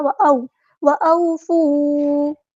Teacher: وَأَو مد لین ہو رہی ہے، نرمی سے بولنا ہے